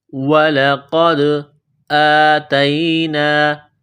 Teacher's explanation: الف کے اوپر کڑا زبر ہے، ایک الف کے لمٹ میں کھینچنا ہے